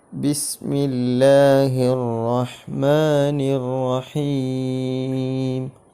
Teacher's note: ബിസ്മില്ലാഹി റഹ്മാനി റഹീം ഈ ബൻറെ മഹ്റജ് വരുന്ന സ്ഥലം നിങ്ങൾ സ്ക്രീനിൽ കണ്ടതുപോലെ രണ്ട് ചുണ്ടുകളിൽ നിന്നാണ് ബ വരുന്നത്